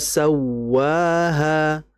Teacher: suara yang jelas atau hentakan suara untuk menjelaskan bahwa di huruf tersebut ada tasdid. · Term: annabr